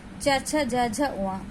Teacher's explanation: च छ ज झ उ, ये तालुव्य व्यंजन है। इन्हें बोलने में हम तलवे की सहायता लेते हैं।